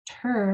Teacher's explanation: begins with a TR that you enunciate both of those sounds really clearly